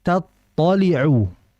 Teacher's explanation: Tatoliu yang pertama huruf ta dia bersifat tipis yaitu istifal. Dan th itu bersifat tebal yaitu istila'illa dengan mengangkat pangkal lidah maka diangkat allatih tatu.